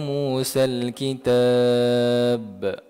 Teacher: kena kuat sikit sebab dia berada di hujung dipanggil qalqalah kubra